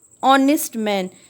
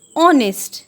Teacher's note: H is silent. And honest is having the sound of O, which is a vowel sound. So we use an before honest.